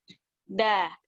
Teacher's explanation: kalau dal ini, ujung lidah itu dia ketemu sama pangkal 2 gigi seri. Otomatis ujung lidah kita itu ada di belakang gigi seri atas. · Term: huruf dal